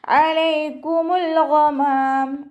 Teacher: വസത്തുൽ ഹൽക്ക്, തൊണ്ടയുടെ മധ്യഭാഗം സൗണ്ട് ക്ലിയർ ആക്കി കൊടുക്കുക കേട്ടോ. ലാമ് കൽക്കലയുടെ ലെറ്ററിലാത്തത് കൊണ്ട് ഹാഫ് സുക്കൂന് കൊടുക്കുക. · ലാമ് കൽക്കലയുടെ ലെറ്ററിലാത്തത് കൊണ്ട് ഹാഫ് സുക്കൂന് കൊടുക്കുക. ഗൈനിൻ്റെ മഖ്റജ് അദ്നൽ ഹൽക്കാണ്, തൊണ്ടയുടെ ആദ്യ ഭാഗം അയിനായി പോവാതെ ശ്രദ്ധിക്കുക. · മീമിൻ്റെ കൂടെ അലിഫ് മദ് വന്നിട്ടുണ്ട്, 2 കൗണ്ട് നീട്ടി കൊടുക്കുക. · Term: അനിൻ്റെ മഖ്റജ്